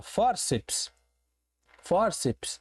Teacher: Ora, separei silabicamente e percebi que eu tenho uma palavra de duas sílabas, a sílaba um e a sílaba dois. E a sílaba tônica, a sílaba forte, a sílaba que dá o tom desta palavra é a penúltima.